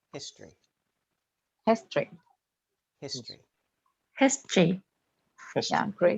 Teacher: in history the o is often not pronounced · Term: elision